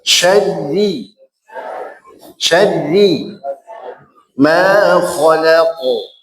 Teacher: Ditipiskan syaddi, syaddi, syaddi ma khalaqu. La-nya tipis, qafnya tebal.